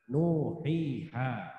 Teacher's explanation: Di dalam kitabnya biasanya dicontohkan dengan kalimat nuhiha. Nu wawu sukun jatuh setelah harokat dhamma, panjang bacanya 2 harokat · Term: matobi